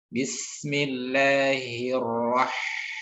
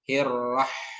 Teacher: Di sana ada tentu makhrajnya dulu ya, yakni dikeluarkan dari tengah tenggorokan, kemudian disertakan hamas ya, dan rohawah yang dominan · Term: huruf H